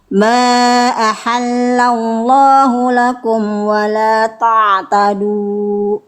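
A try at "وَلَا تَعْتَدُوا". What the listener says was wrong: Dunya kepanjangan Bunda, 2 harokat aja. Nah, tapi jangan ada hamzah. Ada hamzahnya. Bedakan nih. Bunyi yang ada hamzahnya.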